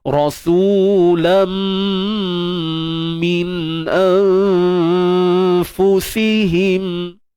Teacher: Sembunyi, itu maksud ikhfa, sembunyikan nun mati di sisi huruf fa. Kita bersedia nak sebut fa, dan fa ni huruf nipis, maka dengung yang terhasil juga nipis. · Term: ikhfa hakiki